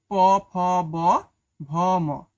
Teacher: যেসব ব্যঞ্জন ধ্বনি উচ্চারণের সময় ঠোট দুটি কাছাকাছি এসে বায়ুপথে বাধা সৃষ্টি করে সেগুলোকে অষ্ঠ ব্যঞ্জন বলে।